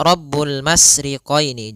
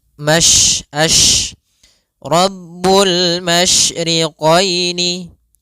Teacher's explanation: sifat yang terkandung di dalam huruf shin, yaitu menyebarnya suara. Sehingga jangan dibaca Rabbul masriqaini, jangan dengan huruf sin, tapi dia huruf shin. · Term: tafasyi